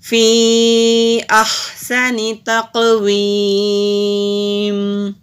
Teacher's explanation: وقف کی صورت میں ہم میم کو ساکن کر دیں گے